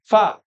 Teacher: Fa itu karakternya nafasnya ngalir, suaranya ngalir, lidahnya tidak terangkat, ya, dan juga tidak lengket, tajam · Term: huruf fa